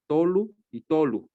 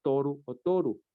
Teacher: hay un cambio un cambio fonético no la L por la r